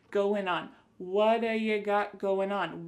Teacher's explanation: we're going to drop that G at the end of the word going.